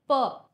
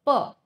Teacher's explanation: खालचे आणि वरचे होट एकमेकांना लागून उच्चार निघतो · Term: औषवर्ण